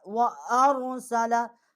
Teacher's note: حمزہ جو ہے اس کو ہم اپنے مخرج سے نکالیں گے، اور را جو ہے اس کو موٹا کر کے پڑھیں گے